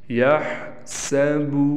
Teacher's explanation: با کو ہم نے کھینچنا نہیں، بعض لوگ اس کو کھینچ دیتے ہیں جس سے مجہول بن جاتا ہے اور حرف کا اضافہ ہو جاتا ہے، جس سے معنی چینج ہو جاتا ہے۔